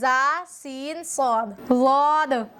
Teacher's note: जा सीन सद जबान की नोक सनाया उलिया और सनाया सुफला की नोकों से मिलकर अदा होते हैं। इन तीनों हर्फों को अदा करते वक्त तीन नोक आपस में टच होती हैं।